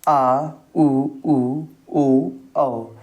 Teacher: आ उ उ ओ औ ये सभी आते हैं पश्च स्वर के अंतर्गत